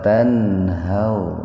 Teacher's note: nun mati ketemu dengan ha, itu disebutnya idhar khalqi